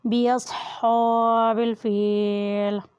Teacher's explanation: باصحاب الفیل، صاد بھی موٹا ادا کیا جاتا ہے یعنی پر ادا کریں۔ ہا کے اوپر کھڑی زبر ہے اس لیے اسے کھینچ کر ادا کریں۔ باصحاب الفیل، فا کے نیچے زیر ہے اور ساتھ یا ہے اس لیے اسے بھی مد کریں یعنی کھینچ کر ادا کریں۔